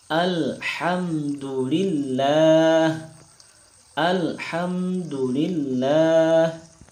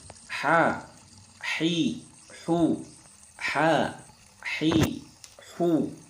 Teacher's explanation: Huruf yang berada di tengah tenggorokan yaitu huruf H · Nah, hurufnya keluar dari tenggorokan.